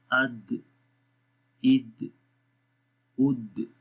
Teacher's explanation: آواز آپ کی زبان کی نوک ثنایا علیہ کی جڑوں پہ لگ رہی ہے اور ایک دم وہاں سے اٹھ رہی ہے. تو یہ جو اٹھنا ہوتا ہے زبان کا، تو یہ قلقلہ کہلاتا ہے. · کلکلا کریں گے ان کے اندر، یعنی کہ باؤنسنگ ساؤنڈ رہے گی